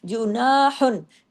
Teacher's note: जीम पेश जो बारीक नून अलिफ ना बारीक दो हरकात हा दो पेश हुन एक तो बारीक फिर दूसरा इज़हार हल्की